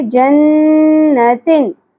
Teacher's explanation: جن، تن اظہار ہے یہاں پر، تنوین کی آواز کو ظاہر کر کے پڑھیں گے